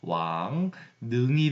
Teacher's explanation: 이응이 있고 리을이 있는 거니까 이 리을이 비음화가 돼서 왕능이 됩니다